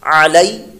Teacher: اگلا کلمہ ہے عین زبر آ، لام یا زبر لئی، علی، عین کی آواز کے ساتھ حلق کے درمیان والے حصے سے